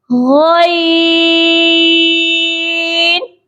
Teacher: اور یہاں پر غین کے ساتھ الف نہیں ہے، اس کو غائن ایسے کر کے نہیں پڑھنا، غا کو لمبا نہیں کرنا، غا کے ساتھ یا ہے، غی، یا کی مقدار کو ہم لمبا کریں گے